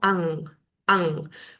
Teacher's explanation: es un sonido que va a nasalizar esa A. Va a quedar como ang, como si sacara un poquito más de aire por la nariz. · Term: Anuswara